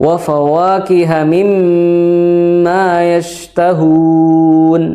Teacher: nun bertasdid dan mim bertasdid itu kadar gunahnya berada pada posisi yang paling lama durasinya atau paling sempurna dalam membunyikannya